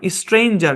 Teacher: সাধারণভাবে কিন্তু শর্ট সাউন্ডই হওয়ার কথা কিন্তু এখানে এ লং সাউন্ড দিচ্ছে